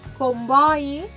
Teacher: la O és oberta perquè darrere tenim una I